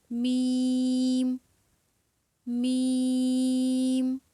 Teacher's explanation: حروف شفویہ ادا ہوں گے، با، بند ہونٹوں کے گیلے حصے سے، با، دونوں ہونٹ آپس میں ملیں گے یہاں سے، با۔ با کے بعد ہے میم، بند ہونٹوں کے خشک حصے سے